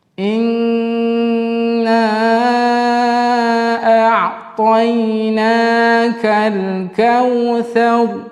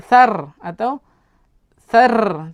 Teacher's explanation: ra yang sebelumnya berbaris fathah, maka di situ dikatakan ra tafkhim, maka kita menebalkan huruf ra